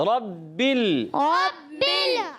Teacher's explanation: را کو موٹا کرنا ہے، را پر زبر ہے، زبر اور پیش ہے، را تو پر ہو جاتا ہے، ٹھیک ہے.